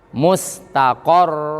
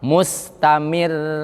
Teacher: Tebal karena sebelumnya berharokat fathah. Tapi kalau mustamir tipis karena sebelumnya berharokat kasroh.